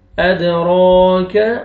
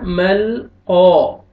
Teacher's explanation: क़ाफ को मोटा करना है और क़ाफ को खींचना है, अलिफ मद्दा है, अलिफ से पहले फतहा, मल क़ारी, रा को बारीक पढ़ेंगे, रा के नीचे कसरा है, ये भी कसरा, ये भी कसरा।